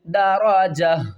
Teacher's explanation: تا کو ڈراپ کریں گے اوپر، دو پیش کو ڈراپ کریں گے اور ہا کو ہم ساکن کر دیں گے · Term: وقف